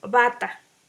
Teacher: B, consonante bilabial oclusiva sonora.